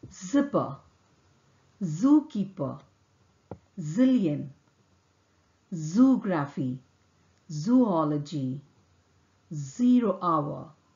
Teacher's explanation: sound is articulated with the tip and front of the tongue close to the teeth ridge the air escapes between the tongue and the teeth ridge here the vocal cord vibrates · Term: z sound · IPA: /z/